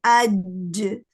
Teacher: جیم میں بالکل ایئر block ہو جاتی ہے